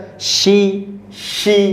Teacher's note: Itu makhrajnya di tengah lidah. Ya. Bertemu dengan langit-langit. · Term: huruf shin